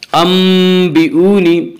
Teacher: अंबिऊनी, इसका कायदा यह है कि नून साकिन और तलवीन के बाद अगर बाए तो वहाँ पर क़ल्ब होगा, यानी नून साकिन और तनवीन को मीम से बदल कर गुन्ना के साथ पढ़ेंगे